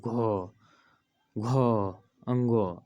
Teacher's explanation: ऐसे करके बोलने के बाद क्या होता है स्वर तंत्र झंकृत होता है यानी कि कंपन एक अलग से कंपन होने लगते हैं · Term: घोष